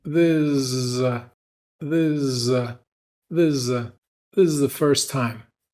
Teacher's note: But if we're talking really fast, then we're probably going to skip that S. And we might even skip the TH in the word the and replace it with the Z from the word is and link everything together.